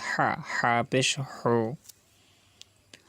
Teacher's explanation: হা গলার ভিতরে যাবে, কণ্ঠনালীর মাঝখান থেকে উচ্চারিত হবে হা